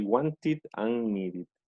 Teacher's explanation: si los sonidos terminan en ED, pero antes hay una T o una D, o sea, estas dos, se pronuncia ED.